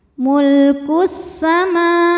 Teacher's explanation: Kemudian ada hukum alif lam syamsiyah. Karena alif lamnya menghadapi huruf syamsiyah yaitu sin. Maka alif lam tidak kita baca. Jadi lewat saja atau dinamakan dengan idgham syamsi. · karena mimnya berbaris fathah panjang maka mim dipanjangkan dua harakat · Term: mad thobi muqaddar